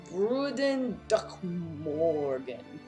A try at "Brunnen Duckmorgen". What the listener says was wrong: Just you gotta roll the R's. Bruden Duckmorgen.